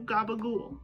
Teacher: That final vowel almost disappears entirely, or is heavily reduced,